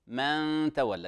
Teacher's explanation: من تولى إخفاء حركتين